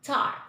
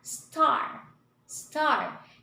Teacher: here in the tar, table, tool, we gave emphasis, or the letter T is more prominent than here in the star, start, steel